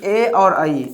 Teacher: ए आई का उच्चारण कहाँ से होता है? कंठ तालु से